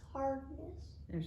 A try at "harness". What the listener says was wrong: You're putting in a D. You're putting in a D. You're saying hardness. Hardness. This is harness.